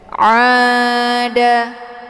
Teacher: Aa dibaca panjang dua harakat karena ada Alif sebelumnya harakat fathah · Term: mad thobii zohiri